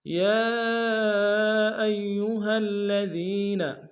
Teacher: یا ایہا الذین، یا کے اوپر کھڑا زبر ہے، کھڑا زبر کے اوپر مد منفصل ہے، کم سے کم دو الف دال میں کھینچیں گے، حمزہ کو یا کے سامنے لیں گے، تشدید زور دیں گے، ہا کو لام الذین کے لام کے سامنے لیں گے، تشدید زور دیں گے، دال کو یا کے سامنے لیں گے، یا مدہ ہے۔